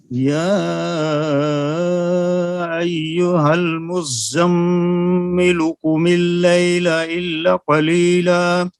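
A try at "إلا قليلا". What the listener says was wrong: الا کو لمبا نہ کیا، پھر پڑھیے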